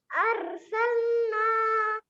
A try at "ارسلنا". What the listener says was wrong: اور را کو موٹا کیجیے، اور سلنا،